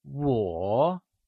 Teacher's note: 我 is pronounced using the falling rising tone